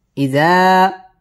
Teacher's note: ইজা মদ্দে তাবাঈ এক আলিফ টেনে পড়তে হবে